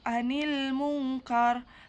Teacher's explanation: Cara membacanya samar dengan dengung dan ditahan selama 3 harakat. Cara pengucapan seperti bunyi eng. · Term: ikfa